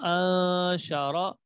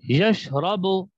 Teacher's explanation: را کے اوپر زبر ہے، را کو موٹا پڑھیں گے